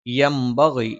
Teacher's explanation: യംബഗി, യ നാവിന്റെ മധ്യഭാഗം മേലെ അണ്ണാക്കിൽ, ന നാവിന്റെ അറ്റം മേലെ മുൻപല്ലിന്റെ മോണയിൽ, ബ രണ്ട് ചുണ്ടിൽ നിന്നാണ് മേലെ ചുണ്ട് അല്പം പുറത്തേക്കും താഴെ ചുണ്ട് അല്പം ഉള്ളിലേക്കും കയറി നിൽക്കും. ഗ തൊണ്ടയുടെ മുകൾ ഭാഗമാണ്, അത് ഗ ങ എന്നീ രണ്ട് ഉച്ചാരണങ്ങളല്ലാതിരിക്കാൻ പ്രത്യേകം ശ്രദ്ധിക്കുക. ഈ രണ്ട് ഉച്ചാരണങ്ങളിൽ നിന്നൊക്കെ വ്യത്യസ്തമായിട്ടുള്ള ഒരു ഉച്ചാരണമാണ് ഗ എന്ന് പറയുന്നത്.